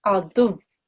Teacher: And if you're going to do a waqf here, which is what is expected, okay, then you have to do duv, but you have to press down on the waw because it's a mushaddad waw